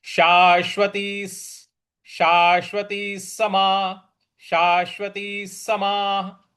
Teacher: देखिए शाश्वती, जो शा के बाद जो बड़ा वाला श है उस पर हमको बल देना है। और ती के आगे जो विसर्ग है उसके आगे स लिखा हुआ है, तो इसको हम जब जोड़ेंगे तो स का ही उच्चारण हम यहां पे ले आएंगे, तो ये क्या बन जाएगा शाश्वती, शाश्वती समा, शाश्वती समा, शाश्वती समाह।